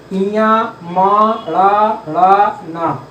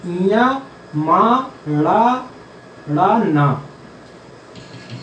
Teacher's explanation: वायु जो है नाक से होती हुई निकलती है, तो इनका उच्चारण स्थान नाक भी है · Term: अनुनासिक वर्ण